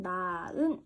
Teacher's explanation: 용언의 어간말 히읗이 뒤에 모음으로 시작하는 형식 형태소 앞에서 탈락해버려서 우리는 얘를 나은 이렇게 발음하잖아. 히읗을 발음하지 않는 현상을 얘기하는 겁니다. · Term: 히읗 탈락